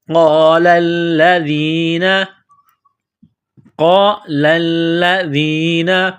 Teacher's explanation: قاف کو موٹا کرنا ہے، لام کو دبانا ہے، سختی کرنی ہے، ذال کو نرم کرنا ہے، زبان تھوڑی سی باہر نکالیں گے، ذال کو پڑھتے وقت ذال یا زیر دی نون زبرنا۔